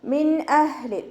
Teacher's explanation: അപ്പോൾ നമ്മളവിടെ നൂൻ സാക്കിനെ വ്യക്തമാക്കിയിട്ട് ഉച്ചരിക്കട്ടോ. ഇദ്ഹാർ ചെയ്തിട്ട് ഉച്ചരിക്കുക.